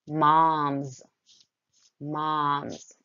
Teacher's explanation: moms sounds like it ends with a z. Or excuse me, it does end with a z sound.